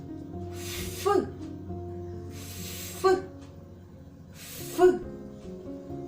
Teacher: звук ф приголосний шумний щелинний верхні зуби змикаються з нижньою губою та утворюють вузьку щелину